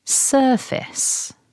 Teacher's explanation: this is a 2-syllable word and we need to stress syllable 1